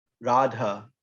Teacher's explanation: so feminine words you don't drop the a radha long a at the end